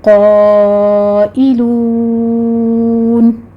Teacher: قائلون ہے، قوف بھی پر ہوگا، الف کو پر پڑھتے ہوئے مد متصل واجب ادا کریں گے، 5 کاؤنٹ کر لینا ہے۔ آخر پر مدارس وقفی ہو رہی ہے، 6 کاؤنٹ کر لیں گے۔